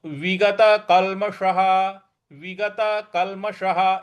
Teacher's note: है तो विगत कलशः ठीक है और उसके बाद में जो विसर्ग है उसका उसके आगे कुछ नहीं लिखा है इसलिए उसका ह उच्चारण करेंगे